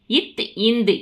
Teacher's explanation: இரண்டும் மேல்வாய் பல்லின் அடியை நாக்கின் நுனி பொருந்துவதால் பிறக்கிறது